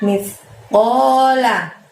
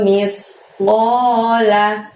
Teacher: Mith, ujung lidah kamu dorong ke gigi atas. Jadi mithnya tipis.